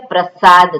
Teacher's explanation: સગડીનો સ એટલે દંત્ય સ છે તો દાંતની સહાયથી એ સ બોલવાનો છે